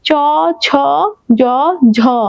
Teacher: দেখো জিহ্বাটা কোথায় লাগছে, তালুতে, ঠিক এই বরাবর, চ, ছ, জ, ঝ, যেহেতু তালুতে লাগছে সেটা হচ্ছে তালব্য বর্ণ